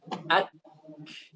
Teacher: sifat syiddah yang ada pada kaf dan ta itu berada di awal. Jadi sifat syiddah itu duluan. Baru setelah syiddah datanglah hams.